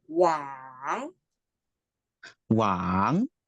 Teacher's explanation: third tone going down and going up